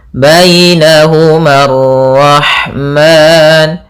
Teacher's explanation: Kemudian alif di sini memang pada dasarnya panjang, tapi karena bertemu dengan alif lam qamari, alif lam syamsiyah, maka dia tidak dibaca alifnya sehingga ma-nya langsung ke ra